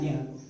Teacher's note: इस य का पहला उच्चारण स्थान होगा तालु